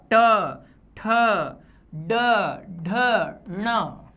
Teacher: मूर्धा का अर्थ है इन व्यंजनों को उच्चारण करने पर जीभ अंदर की तरफ खींचेगी और गले पर दबाव पड़ेगा